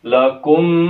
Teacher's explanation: Ini terdapat gunnah musyadad juga di sini. Kurang lebih 3 ya, 3 ketukan dengungnya.